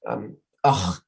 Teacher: with this sort of throat-clearing, phlegmy sound that people often don't tend to like